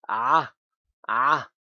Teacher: the sound comes from the end of the throat